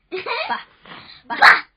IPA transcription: bə bə